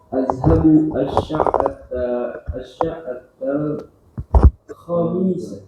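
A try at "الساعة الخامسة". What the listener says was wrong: Khawnya panjang. As-sa'atal khamisah.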